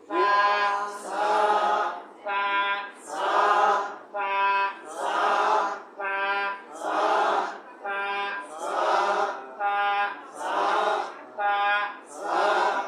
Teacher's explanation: জিহ্বার আগার উপরের দাঁতের আগা একসঙ্গে মিল করিয়া উচ্চারণ করেন